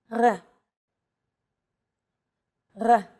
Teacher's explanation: this letter is pronounced differently than an English R it's pronounced at the back of the throat instead of forward in the mouth